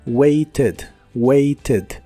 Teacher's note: Es un verbo regular y la terminación ed se pronuncia como ed, pero con la e suave